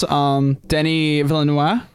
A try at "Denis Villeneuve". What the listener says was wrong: I read online the V is not silent.